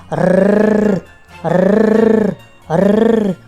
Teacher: підняти широкий язичок за верхні зуби і подути на нього [музика] зуби й язичок не пропускають звук а він проривається язичок дрожить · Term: звук р